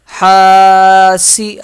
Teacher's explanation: ہا الف زبر ہا، سین زیر سی، حاسی، ہا کو ایک الف کی مقدار کھینچ کے پڑھیں گے۔